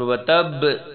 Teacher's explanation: لہب یہ گرج کے پڑھتے ہیں گلے کے درمیان سے. اور وتب با کے اوپر کلکلا ہوگا. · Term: موٹی ہا